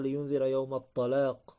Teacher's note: فخم التاء مثلا فقال لينذر يوم الطلاق